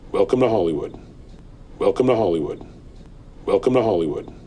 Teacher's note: the vowel is reduced to the schwa so we make the T a flap T in the word to sometimes when the sound before was voiced so in this case